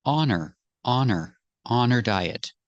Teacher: with her the H is silent because the word her is not a stressed word